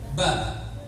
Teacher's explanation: Contoh, ba ini dua bibir. Maka yang keluar dari huruf ba, bibirnya yang menyentuh, saling menyentuh. Ba, tidak ada bibir kalau bibir gak bersentuhan tidak akan bisa melafadzkan ba.